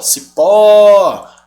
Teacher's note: sílaba tônica é a última é uma oxítona